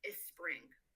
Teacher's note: students may add a vowel in front of it and pronounce it as a spring